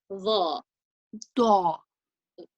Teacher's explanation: you're going to curve your tongue between your teeth, and you're going to create a heavier sound with a rounder mouth.